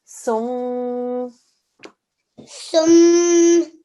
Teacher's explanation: It's a mim mushaddad, so we're going to do 2-second nasal sound.